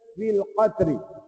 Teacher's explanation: Jadi cara bacanya adalah diidghamkan fa yang pertama tadi masuk dalam fa yang kedua. Maka di atas huruf fa yang kedua itu diletakkan di tanda syaddah sabdu. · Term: idgham mutamathilain